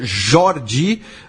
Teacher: o nome e Jordi é uma paroxítona, então a vogal mais forte é o o